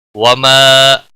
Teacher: وما الف مدہ ہے، ایک الف کے برابر کھینچ کر پڑھیں گے